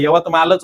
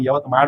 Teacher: उत्तरेकडले यवतमालच म्हणतात आपण यवतमाळ म्हणतो